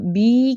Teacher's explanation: اگر اس کو ایک حرکت سے زیادہ کھینچا تو زیر یا بن جائے گی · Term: یا مدہ